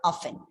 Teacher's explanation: we pronounce this word with a silent T